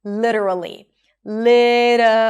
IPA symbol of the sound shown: ɾ